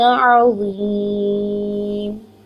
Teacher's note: عین کے اوپر ایک حرکت ہے، عین کی آواز کو واضح کرنا ہے، حمزہ کی آواز نہیں بنانا ہے اس کو. اس کا مخرج مڈ آف دا تھروٹ سے ہے.